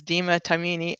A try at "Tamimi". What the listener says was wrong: Close. It's just Deema Tamimi. 2 M's.